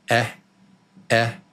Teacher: Comes from the back of the throat, actually.